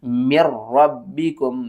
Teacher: हमज़ा को मीम से मिलाना है, मीम मुशद्दद है, गुन्ने के साथ पढ़ेंगे और उसके बाद हमने नून को यहाँ पर नहीं पढ़ना, हमने रा को पढ़ना है